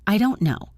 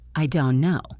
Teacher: I will stop the air on the t and don't and go straight to the n in no. It sounds like I don't know.